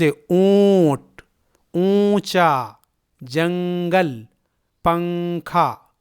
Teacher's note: جواب، نون ساکن یا تنوین پڑھتے وقت زبان کی نوک تالو سے لگ جاتی ہے، یعنی چپک جاتی ہے، لیکن اخفا کرتے وقت زبان کی نوک تالو سے نہیں لگتی ہے اور باقی آواز ناک کی جڑ کی طرف جاتی ہے، جیسے لفظ اونٹ، اونچا، جنگل، پنکھا وغیرہ میں نون کی آواز کو ناک میں چھپا کر پڑھا جاتا ہے